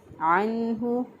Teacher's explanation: نون ساکن کی آواز کو ظاہر کر کے پڑھا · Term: اظہار